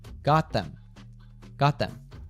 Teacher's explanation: The T in got drops and it links with them. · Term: connected speech